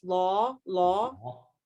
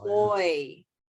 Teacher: it's just a big open mouth all the jaw is pretty low the tongue is way back